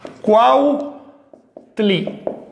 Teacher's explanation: la U al final de una sílaba o de una palabra nunca se usa así como U, siempre adquiere un saltillo